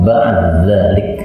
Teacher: dal ketemu dal, ini boleh idgham